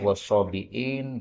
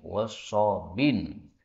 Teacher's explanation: wasabiin, boleh dihilangkan hamzah menjadi wasabin